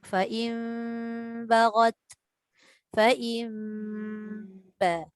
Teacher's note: Letak aja. Pertemuan bibir atas dengan bibir bawah itu syarat dia. Letak tapi jangan ditekan dengan kuat. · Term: iqlab